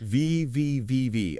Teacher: The only difference is for V, your vocal cords vibrate, and for F, they don't. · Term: V sound